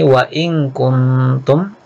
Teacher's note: nun sukun ketemu kaf, hukumnya ikhfa, disamarkan dan didengungkan